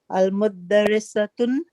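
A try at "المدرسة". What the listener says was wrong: Al Madrasato. There's alif lam. And when there's alif lam, there's no tanween. It's one pesh, one dham. Al Madrasato.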